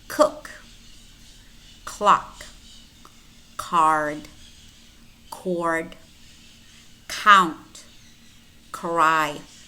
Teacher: is a voiceless velar stop it might also be aspirated and aspirated or unreleased and it has several spellings it might